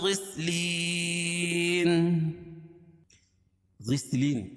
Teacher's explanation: غسلین یا ساکن سے پہلے زیر ہو تو یا مدہ اس کو 1 الف کے برابر کھینچ کے پڑھیں گے. 2 زیر کی تنوین پر وقفہ کریں گے تو اس کو جزم سے بدل دیں گے تو یہاں مد عارض وقفی ہو جائے گا.